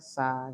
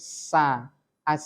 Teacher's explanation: Lah jangan terlalu panjang, 2 harokat. Kemudian sin itu kan ada sifat sofir namanya nyaring ya. Tidak cukup s seperti bahasa kita sa gitu saja, tapi sa as gitu.